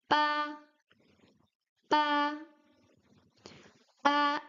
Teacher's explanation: the B sound in Chinese is more closer to a P sound. You don't uh blow air out of your mouth, but the lips are really strong when you pronounce the B.